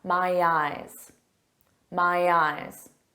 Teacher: notice that Y sound helps link to the vowel